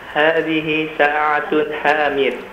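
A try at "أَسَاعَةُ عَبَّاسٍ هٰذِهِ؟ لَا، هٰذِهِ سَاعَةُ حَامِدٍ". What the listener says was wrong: Ya, sa'atunya dibaca tanpa tanwin. Sa'atu hamidin.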